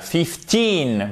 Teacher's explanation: l'accent tonique sur la deuxième syllabe